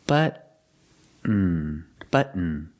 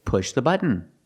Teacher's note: the T is a stop T. So you put your tongue up to the roof of the mouth and stop the T. Stop the air. But, and then just fall to an N.